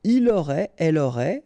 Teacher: final T not pronounced, so phonetically exactly the same form here